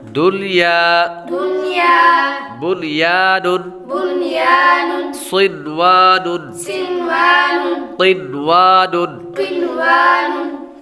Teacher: ان چار کلمات میں ہم غنہ نہیں کریں گے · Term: اظہار مطلق